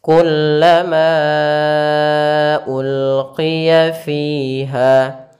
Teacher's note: Kullama, seperti itu kita bacanya. Panjangkan dulu ma-nya baru ke u. Kullama ulqiya fiha. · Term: mad jaiz munfasil